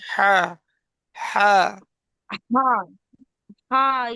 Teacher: গলার মধ্যখান থেকে হা, হা হা, হা।